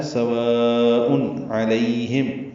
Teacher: و الف مدہ کے بعد حمزہ آنے کی وجہ سے مد متصل ہے، ہم اس کو 4 حرکات سے زیادہ لمبا کرتے ہیں. تنوین ہے حمزہ پر، اس کے بعد عین آنے کی وجہ سے اظہار ہے